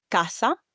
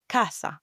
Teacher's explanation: In Spanish, the A is pronounced as a clear open A sound. So it would be ah similar to how you would say for example butter in English.